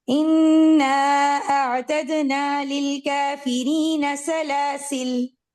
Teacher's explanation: सलासिल अलिफ मैंने नहीं पढ़ा, मैं लाम के ऊपर रुकी हूँ, उसको सुकून या जज़म देके. इसको दोनों ही तरीके से पढ़ा गया.